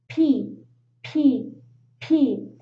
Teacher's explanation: the mouth area pronounce the letter p practice p p p if you put your hand in your throat you will notice that your vocal cords don't vibrate repeat p p p you don't feel anything right that's why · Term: voiceless sound